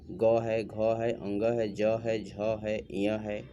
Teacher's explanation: वर्ण के उच्चारण में हवा स्वर तंत्रिका से टकरा कर बाहर निकलती है और घर्षण पैदा होता है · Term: सघोष वर्ण